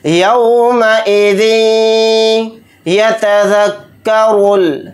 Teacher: या पर थोड़ी देर आवाज़ को रोककर इदगाम करके पढ़ेंगे। इस तरह से इदगाम करेंगे, यौमइज़िन यतज़क्करुल, रा को मोटा यानी पुर पढ़ेंगे क्योंकि रा के ऊपर पेश है, और रा को लाम साकिन के साथ मिलाकर पढ़ेंगे, ये अलिफ नहीं पढ़ा जाएगा।